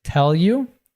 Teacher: the you reduces and links to tell